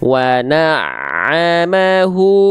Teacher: hu di sini dibaca dengan kadar panjang u-nya 2 harokat karena dhammahnya terbalik. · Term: mad silah qasirah